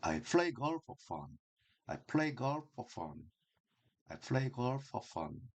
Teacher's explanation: 자, for 전치사기 때문에 뭐뭐를 위해서 할 때 이 for도 약하고 빠르게 읽어요. 그래서 I play golf for fun이라는 이 단어는 플레이와 골프 fun 요것만 강하고 길게 읽습니다.